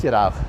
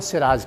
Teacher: جی فَجَعَلْنَا سِرَاجًا وَحَاجًا، وَجَعَلْنَا اور ہم نے بنایا چراغ، سراج معنی سورج نہیں ہے، سراج کے معنی چراغ کے آتے ہیں، بس یہ چے سین سے بدل گیا اس لیے کہ عربی میں چے نہیں ہوتا